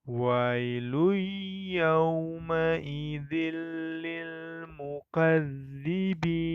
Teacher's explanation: terdapat hukum bacaan Idgham Bighunnah sama seperti di ayat yang ke-9 tanwin bertemu dengan huruf ya maka dibacanya dengan mendengung